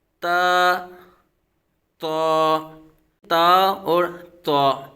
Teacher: جی، تا تا اور تا، ان دونوں کا مخرج ایک ہی ہے، یعنی تا زبان کے نوک اور اوپر کے دانتوں کی جڑ سے ادا ہوتا ہے، اور تا بھی زبان کی نوک اور اوپر کے دانتوں کی جڑ سے ادا ہوتا ہے۔